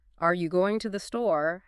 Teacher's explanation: has a rising intonation at the end indicating a question.